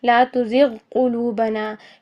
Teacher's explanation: ادنی حلق سے غین ادا ہو رہا ہے اور اسی طرح اقصی لسان تقریباً ادنی حلق کے قریب ہی ہوتی ہے، جہاں سے اوپر نرم تالو سے یہ قوے کے قریب سے یہ قاف ادا ہوتا ہے، تو قریب مخرج ہونے کے باوجود یہاں پر ادغام متقاربین ان حروف پر نہیں ہوگا.